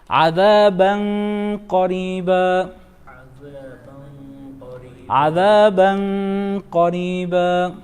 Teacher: N is followed by qaf. Qaf is one of the 15 letters of ikhfā. Therefore, we're going to hide. We're going to hide tanween here.